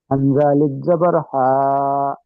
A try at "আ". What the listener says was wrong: হা নয় ভাই, হামজা আলিফ জাবার আ, আ উচ্চারণ হবে, হা নয়, বুঝলেন? হামজা জাবার আ, তাই হামজা আলিফ জাবার আ।